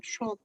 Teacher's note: Ngowosnya itu lebih ke sin titik 3. Shot itu enggak ngowos.